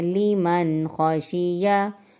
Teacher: نون ساکن کے بعد خا حروف ہلکی ہے تو یہاں پر غنہ نہیں کریں گے